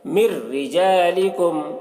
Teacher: اور را کو باریک پڑھیں گے کیونکہ رائے مشددہ کے نیچے زیر ہے